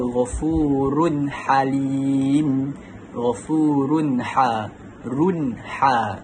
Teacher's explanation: tanwin bertemu dengan huruf ha. Jadi dibaca dengan jelas. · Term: izhar halki